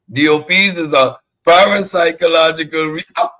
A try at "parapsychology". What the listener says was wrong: He can't even say it. Parapsychology, not parapsychological.